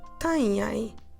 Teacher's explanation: we double the nasal sound so instead of saying tiny we have a double tanyai it's important to keep your mouth open so don't close your